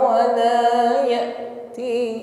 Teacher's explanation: hamzah sukun makhraj tertutup dengan sempurna sehingga suara hurufnya tertahan